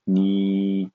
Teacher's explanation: The third tone, falling and rising tone, or V tone, falling and rising.